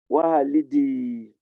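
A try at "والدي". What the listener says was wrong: Walidi. Walidi. Say wa. Say wa. Wa. Wa. Lidi. Wa. Lidi. lidi. Don't put, you are putting Hamza. You are putting Hamza. There's not Hamza, it's Alif.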